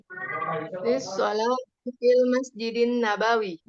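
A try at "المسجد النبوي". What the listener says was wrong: Bu ini sama, maaf. An-Nabawinya juga satu harakat. Satu harakat aja. Nabawi.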